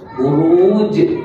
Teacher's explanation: huruf jim itu adalah sifatnya qalqalah dia melantun dia melantun maka dia berada pada kedudukan wakaf dia berhenti maka dinamakan sebagai qalqalah kubra buru Uj lantunannya keras.